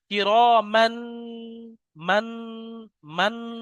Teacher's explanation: আমি যে আওয়াজটা নাকে ধরে রাখছি এর নাম ইকফা